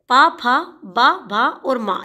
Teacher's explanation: जिनका उच्चारण करते समय दोनों होठों से स्वास का अवरोध उत्पन्न होता है। वे ओष्ठ व्यंजन कहलाते हैं।